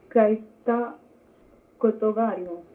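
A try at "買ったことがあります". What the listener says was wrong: ತಪ್ಪು. ಹಾಂ ಒತ್ತೇಳ್ಬೇಕಲ್ಲ ಇಲ್ಲೂ ಈ ಇದೆ.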